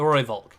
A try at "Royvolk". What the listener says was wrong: Royvolk. Royvolk. Roy. You gotta roll that Roy.